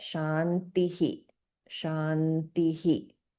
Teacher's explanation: it's just echoing the previous vowel sound with a h sound as well. · So this will get pronounced as shantihi. So there's an echoing of the I sound, which is right before the visarga